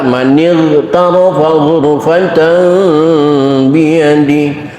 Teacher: mohon jangan dikolkolahkan sehingga terdengar baca manig tarofa. Tolong jangan, karena ughin bukan huruf kolkolah.